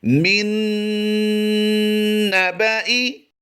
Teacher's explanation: یہاں پر الف جو ہے یہ زائد ہے. حمزہ زیر ای کی آواز دیں گے